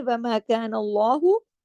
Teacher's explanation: اللہ کے نام کو ہم نے ہیوی پڑھا زبر کی وجہ سے